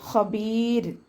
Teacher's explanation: നമ്മൾവിടെ വക്കഫ് ചെയ്യുന്ന സമയത്ത് സുക്കൂൻ കൊടുക്കുല്ലോ അപ്പോ റോക്ക് സുക്കൂനും അതിന്റെ മുന്നേ മദ്ധക്ഷരമായിട്ടുള്ള യ വന്നു കഴിഞ്ഞാൽ നമ്മൾ എന്ത് ചെയ്യണം അവിടെ റയെ ലൈറ്റ് ആക്കിയിട്ടാണ് ഉച്ചരിക്കേണ്ടത് ഹബീർ എന്ന് പറഞ്ഞിട്ട് ഫുൾ ആക്കിയിട്ട് ഹബീർ എന്ന് പറഞ്ഞിട്ട് ഫുൾ സുക്കൂൻ അല്ല